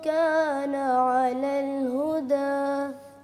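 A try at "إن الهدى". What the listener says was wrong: हमजा को मोटा ना करें अ र दोनों बारीक हमजा के दरमियान र मोटी आ गई है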